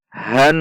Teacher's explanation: Ha fathah masuk ke nun tasydid. Berarti nun tasydid ada gunnah. Dibaca dengung 2 ketuk. Han didengungkan 2 ketuk, tidak boleh dibaca pendek.